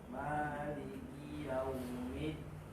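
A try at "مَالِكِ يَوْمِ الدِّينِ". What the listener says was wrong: Middin. Itu salah. Di situ salahnya. Ya. Middin. Ulang sekali. Jangan ditinggikan suara di mi-nya. Jangan tinggikan suara.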